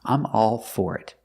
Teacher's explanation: in this expression for is stressed so we pronounce with the or sound I'm all for it if you agree with someone about what